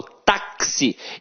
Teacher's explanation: o X aqui tem som de KS. Ou seja, uma letra tem 2 sons. Quando uma letra tem 2 sons, eu chamo de dífono.